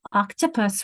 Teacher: Octopus, we've got a schwa in the middle